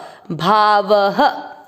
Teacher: अ की मात्रा है तो विसर्ग को पढ़ेंगे ह